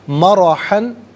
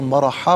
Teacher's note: را پر زبر ہے، را کو پر کر کے پڑھیں گے